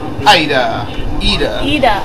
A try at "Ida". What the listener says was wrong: Ida. Ida. You don't pronounce the I the same way.